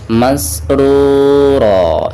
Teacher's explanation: Ada dhammah ra lalu berhadapan dengan waw sukun, maka dihukumi mad tabi'i, dibacanya 2 harokat.